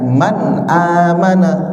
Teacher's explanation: nun mati bertemu hamzah, harus dijelaskan, jelas, terang, tidak didengungkan, tidak ditahan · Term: izhar